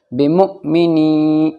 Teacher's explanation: حمزہ ساکن جھٹکے سے پڑھا جاتا ہے